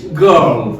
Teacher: British में हम थोड़ा कम ही बोलते हैं र साउंड को, but Americans they come with the r sound.